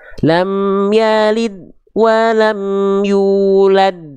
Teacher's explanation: kesalahan yang sering kali terjadi yang pertama adalah dilafalkan dengan tidak memantulkan suara. Itu yang pertama. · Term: dal sukunnya kurang sempurna